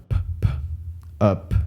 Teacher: a bilabial plosive a voiced bilabial plosive it's bilabial because both it's bilabial because both of your lips are touching and it's a plosive because of that that action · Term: bilabial explosive